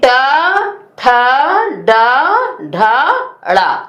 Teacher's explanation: वो मूर्धा से उच्चारित होते हैं, इसलिए ये मूर्धन्य व्यंजन या मूर्धन्य वर्ण कहलाते हैं